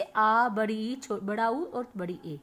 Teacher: और दीर्घ स्वर ऐसे स्वर जिनके उच्चारण में ह्रस्वों की अपेक्षा दुगना समय लगता है, जैसे आ, बड़ी ई, बड़ा उ और बड़ी ए।